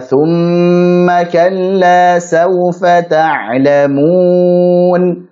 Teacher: Jadi panjangkan untuk mim bertasydidnya.